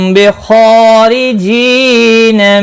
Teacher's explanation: खा मुस्तालिया है, पुर पढ़ा जाएगा। इसके ऊपर खड़ी ज़बर भी है, एक अलिफ के बराबर खींच कर पढ़ेंगे। · मीम साकिन के बाद बा आया है, ये इख्फा शफवी होगा। गुन्ना के साथ पढ़ेंगे। खा मुस्तालिया है, पुर पढ़ा जाएगा।